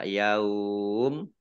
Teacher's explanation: ya Ini mimnya dibaca sukun sehingga dibaca Yaum nah ini namanya mad layyin dibaca panjang boleh ya dua harokat